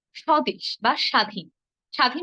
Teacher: শব্দের শুরুতে যদি বফলা থাকে তাহলে আমরা বফের উচ্চারণটি করব না